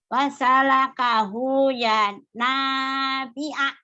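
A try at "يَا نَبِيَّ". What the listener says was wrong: B-nya panjang ya. Nih, B-A. B ini panjang. Yang panjang.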